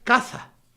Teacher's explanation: De hecho, pronunciamos así, la S. Pero también se pronuncia caza, es decir, que es con la lengua un poquitín más hacia adelante